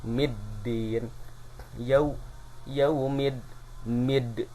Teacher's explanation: memasukkan bunyi huruf mim kepada huruf dal, seolah-olah di tengahnya ada alif lam tidak terbaca